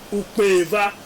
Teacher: The A is now realized, as a nasal A in this context. That is after the deletion of the original vowel.